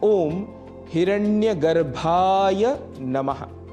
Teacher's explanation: सामान्य रूप से उच्चारण दोष के कारण हम हिरण्यगर्भाय नमः ऐसा भी कह जाते हैं, पर यहाँ भ महाप्राण है, अतः प्राणवायु अधिक लगेगी